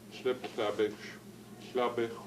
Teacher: In other words, the sl here gets repeated here. The B, because it's before a consonant, becomes P.